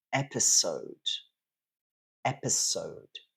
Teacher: in French it would be episod but in English it's episode so stress is on the first syllable